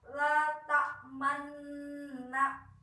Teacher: kita bisa mengkombinasikan harokat fathah dan doma disertai monyong bibir kita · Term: ismam